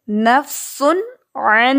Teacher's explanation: نفسن آپ کو پتہ ہے کہ پیش تنوین ہے، اس کے بعد عین ہے. عین حروف حلقی میں سے ہے تو یہاں پر ہم نون کی آواز کو شو کریں گے